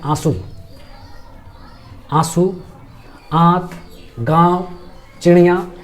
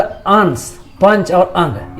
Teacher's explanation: अनुनासिक स्वर के उच्चारण में नाक से कम मात्रा में सांस निकलती है और मुख से अधिक, जबकि अनुस्वार में क्या होता है, इसके जस्ट ऑपोजिट होता है, नाक से अधिक सांस निकलती है और मुख से कम।